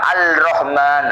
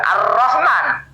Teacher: Dia membaca tasdid itu dengan ringan, dengan terpisah.